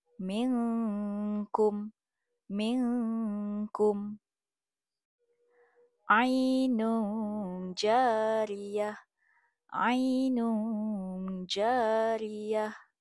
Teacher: Ikhfa haqiqi. Sembunyikan bunyi n, gantikan dengan dengung bunyi ng.